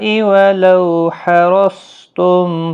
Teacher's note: ولو، لو واولین ہے، تھوڑا نرمی کے ساتھ آدھے الف کی مقدار کے برابر کھینچ کر پڑھیں گے۔ را پور پڑھا جائے گا زبر کی وجہ سے، صاد مستعلیہ ہے، پور پڑھا جائے گا